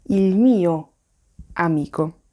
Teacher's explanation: Non c'è nessuna pausa fra il e mio. Il trucco quindi è pronunciare come se si trattasse di una singola parola.